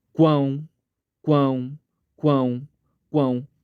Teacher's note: quão começa com u tem o a nasalizado forte que é o ápice da sílaba e termina com som de u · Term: tritongo